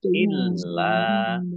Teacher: Dibaca panjang boleh 5, boleh 2 harokat. Illa lamnya dibaca double, ada tasdidnya. Biar tampak doublenya maka ditekan